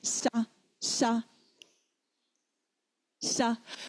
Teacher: when we say sha, our tongue is pointed at the front of our teeth.